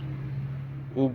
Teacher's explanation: ان حروف پہ اگر جزم ہو، سکون ہو، تو پڑھتے وقت ان کا مخرج ٹکر کھا کے الگ ہو جاتا ہے، یعنی ہونٹ ایک دوسرے کے ساتھ ملتے ہیں اور پھر الگ ہو جاتے ہیں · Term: قلقلہ